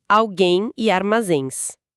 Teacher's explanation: terminam com o som nasal de em ou ens